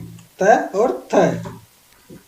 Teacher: जो त और थ है ये बोलते समय आपके दांतों पे जीभ आपकी अड़ती है, तो दंत्य का मतलब होता है कि दांत से टच होने पर। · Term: दंत्य ध्वनि